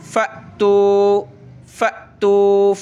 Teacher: حمزہ ساکنہ کو پڑھتے وقت ہمیشہ جھٹکا دینا ہوتا ہے، جھٹکا دے کر پڑھا جاتا ہے